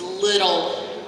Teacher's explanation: That middle sound, my tongue is just hitting the roof of my mouth one time. That's called a flap.